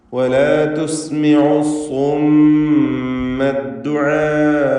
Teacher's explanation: ഈ പദത്തിലെ ദീർഘം മദ് മുത്തസിൽ വാജിബ് എന്നതാണ്. നിർബന്ധമായും 4-5 ഹറക്കത്തിൻ്റെ അളവിൽ അലിഫിനെ ദീർഘിപ്പിക്കണം. ഒറ്റ പദത്തിലായിക്കൊണ്ട് ദീർഘാക്ഷരവും ശേഷം ഹംസയും വന്നു എന്നതാണ് ഇതിനുള്ള കാരണം.